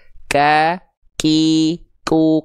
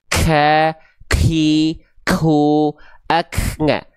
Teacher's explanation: Hams itu artinya terpercik nafas. Jadi ketika teman-teman lafalkan huruf kaf itu ada percikan nafasnya.